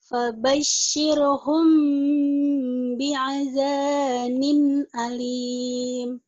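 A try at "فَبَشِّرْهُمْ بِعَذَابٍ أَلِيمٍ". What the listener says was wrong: Di sini, Mbak. Bi'adzabin. Di sini jangan langsung mingkem. Bilang. Jangan langsung menutup bibirnya. Disamarkan dulu.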